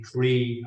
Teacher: the Irish people, for example, we don't really use this TH sound